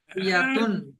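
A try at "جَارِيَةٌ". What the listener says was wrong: জারিয়াতুন হবে না, এখানে গোল তাকে হা হয়ে যাবে।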